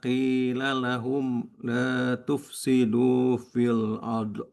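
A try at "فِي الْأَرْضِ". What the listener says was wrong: Jadi bacanya tidak boleh fil ard. Ard. Tidak boleh ada pantulan.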